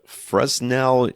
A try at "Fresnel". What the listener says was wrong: Fel with an S in the middle of the word, but nobody says it.